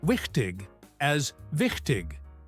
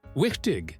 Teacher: with the ch sound from the back of your throat